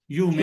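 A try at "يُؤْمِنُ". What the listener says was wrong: लेकिन थोड़ा सा हमजा को साथ रखिएगा, ठीक है।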